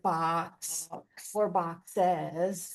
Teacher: So, you begin in the back going and then S. >> And notice the K doesn't vibrate or so. The S definitely sounds like an S and not a Z. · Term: KS sound